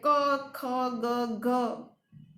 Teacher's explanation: જીભનો પૃષ્ઠ ભાગ જે છે એ પોચા તાળવાને સ્પર્શે છે, કંઠ પાસે હવાનો અવરોધ થાય છે તો ક ખ ગ ઘ વગેરે વ્યંજનો, કંઠ્ય વ્યંજનો જેને આપણે કહીએ છીએ, એ ઉત્પન્ન થાય છે.